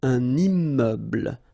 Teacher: So you can see I'm making this little liaison between the two.